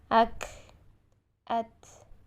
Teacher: کاف اور تا کو ساکن حالت میں ادا کرتے ہوئے سانس جاری کریں گے